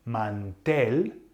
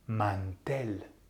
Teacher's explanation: the emphasis should be on the last vowel which is the E